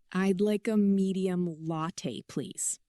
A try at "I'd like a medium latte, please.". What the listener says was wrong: Good start, but you're thinking. You're being careful. I want you to be careless. Speed it up. Sound lazy. Sound natural. Native speakers don't pronounce every syllable like a robot.